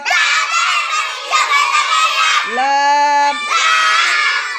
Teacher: 8 number মাখরাজ জিহ্বার আগার কিনারা সামনের উপরের দাঁতের মাড়ির সঙ্গে লাগাইয়া